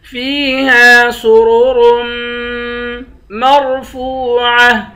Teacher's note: میم کو را سے ملا کر میم پر غنہ کریں گے، میم کو را سے ملا کر را کو موٹا پڑھیں گے